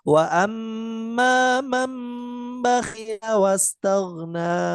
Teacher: Nunnya dibaca huruf mim diganti iqlab diganti dengan huruf mim. Jadi walaupun tampaknya nun tapi bunyinya bukan nun melainkan huruf mim.